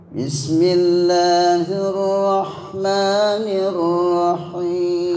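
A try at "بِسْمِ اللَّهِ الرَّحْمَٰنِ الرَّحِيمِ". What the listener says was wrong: Hamnya kurang cekas. Itu namanya kesalahan lahnul khofi, kesalahan ringan. Bismillahirrahmanirrahim.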